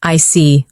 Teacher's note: I see. With falling tone.